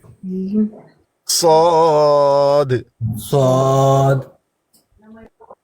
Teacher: فرق یہ ہے کہ صاد کو منہ بھر کے پڑھنا ہے, موٹا کر کے پڑھنا ہے. جیسے طا کو کیا اسی طرح صاد کو.